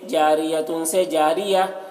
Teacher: गोलता पर वक्फ़ करना हो तो वो हाय साकिना बन जाती है